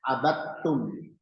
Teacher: Pada kalimat ini huruf dal hilang. Langsung ke huruf ta, abadtum.